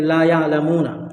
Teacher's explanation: آپ کو لا میں ایک الف کھینچنا ہے